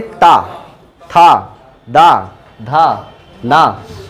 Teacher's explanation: जब भी बोलेंगे तो जीभ जो है दांतों के बीच में आ जाती है या उसके बिल्कुल पास रहेगी, तो ऐसे को बोलते हैं दंत्य वर्ण या दंत्य ध्वनियाँ।